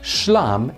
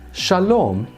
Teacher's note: in both Aramaic and Hebrew, this initial S sound becomes a sh sound, and then in Hebrew on top of that, the long a vowel becomes a long o, so that this form ends up being shlam in Aramaic, but shalom in Hebrew.